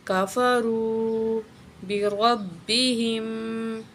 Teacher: ہے ایک الف کے برابر کھینچ کے پڑھیں گے کافرو بربہم را کو موٹا کر کے پڑھیں گے اور را کو با کے ساتھ ملائیں گے · وللذین کاف زبر کا فا زبر فا را پیش واو رو واو ساکن اس سے پہلے پیش حروف مدہ میں سے ہے ایک الف کے برابر کھینچ کے پڑھیں گے